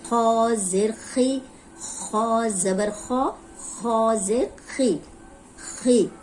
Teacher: अब इसमें होंठ गोल नहीं होंगे, इसको मोटा करना है और जेर को लंबा होने से बचाना है।